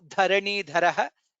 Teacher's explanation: Dha is mahaprana. Again dharani dharaha is mahaprana.